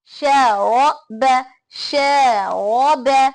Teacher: زاد، خوف، تاب، جاہد، حاسب، جناح، شارب، شارب. رب، ش باریک، را موٹا، با باریک، شارب، شارب.